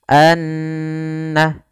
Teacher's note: Cara membacanya yaitu suara annya kita tahan anna baru dilepaskan sehingga dipanjangkan sekedar kadar dua harakat lebih sedikit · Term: ghunah, gunnah